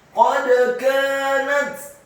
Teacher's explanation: Qad kanat, qad qafnya dibaca tafkhim tebal fathah satu harokat, dalnya dibaca sukun dan wajib untuk diqalqalahkan atau dipantulkan